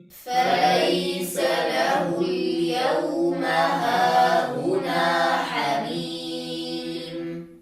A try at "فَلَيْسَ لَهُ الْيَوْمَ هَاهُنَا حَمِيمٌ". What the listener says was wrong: أسمع صوت غنة في الياء المدية في كلمة حميم، لأنها سبقت بحرف أغن وبعدها حرف أغن، سبقت بميم وبعدها ميم، فاحذروا أيها الأحبة أن تنتقل الغنة حتى تصل إلى الياء المدية التي لا